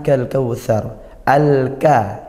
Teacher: alif lam bertemu huruf Kaf Nah maka dibaca izhar lam sukunnya dibaca izhar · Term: izhar qamariah